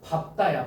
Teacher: 앞에 리을이 탈락해서 밝다가 아니고 밥다가 된다는 거예요